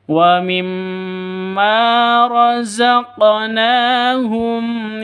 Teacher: Na panjang selama dua ketukan karena ada alif yang didahului oleh fathah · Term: Mad Asli